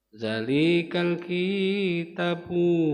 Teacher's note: Za panjang. Mat apa itu? Mat tabi'i kan. Dua ketukan, dua harakat.